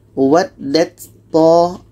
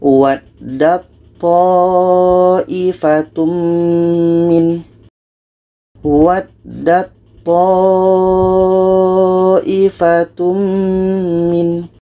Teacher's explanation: Jadi kalau kita baca what that to, itu salah. Karena ketika ta mati bertemu to, ta ini tidak dibaca lagi. Yang da ini terus masuk ke to.